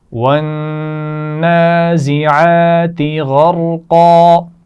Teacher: غین کو موٹا پڑھا جائے گا، را بھی موٹا پڑھا جائے گا اور قاف بھی موٹا پڑھا جائے گا